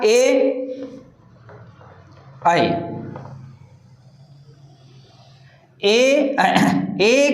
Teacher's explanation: काही नाही कंठ प्लस तालु कंठ तालव्य कंठ तालव्य वर्ण म्हणजे ए आणि ऐ हे जे दोन वर्ण आहेत हे कंठ आणि तालव्य दोन्हीला मिक्स करून निघणारे वर्ण आहेत